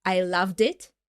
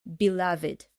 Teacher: when we use the verb love in the past so we say loved so there is no e sound but in this adjective in this word belov it we actually